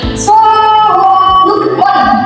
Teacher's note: Nah, ini kan ada dengung ya. Dengungnya satu alif atau dua harokat.